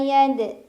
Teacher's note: ada Qalqalah Sugra karena ada huruf qalqala yaitu Dal yang sukunnya sukun asli cara bacanya dipantulkan pantulannya kecil